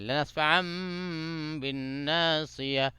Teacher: نون کے اوپر جو ہے غنہ کریں گے کیونکہ نون کے اوپر تشدید آ گیا